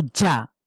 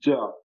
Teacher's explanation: একটু বুঝতে পারছেন জিম কিনা? জবর জা একটা আমি স্ট্রংলি পড়ছি, জিভের মাঝখানটা তালুর সাথে লক করে দিচ্ছি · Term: জিম জবর জা